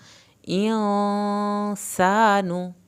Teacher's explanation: इंसानु, यहाँ पे गुन्ना होगा, सीन को हमने सीटी की आवाज़ के साथ ही पढ़ना है, और अलिफ को खींचना है इंसानु, लेकिन नून की पेश नहीं खींची जानी।